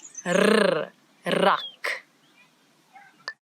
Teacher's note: it's the rrr, as if your tongue is jumping up and down in your mouth.